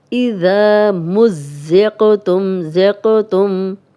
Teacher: اور آگے قلقلہ بھی ہے، قاف پہ جب بھی جزم آ جائے تو ہم اسے ہلا کے پڑھتے ہیں